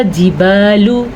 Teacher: لام کو لمبا نہیں کریں گے لیکن یہاں پہ با کو لمبا کریں گے کیونکہ با کے بعد الف ہے، یہاں پہ الف مدہ بن رہا ہے۔